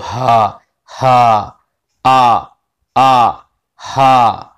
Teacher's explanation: حمزہ اور ہا یہ شروع حلق سے ہوتے ہیں، یعنی سینے کی طرف جو حلق ہے وہاں سے حمزہ اور ہا ادا ہوتے ہیں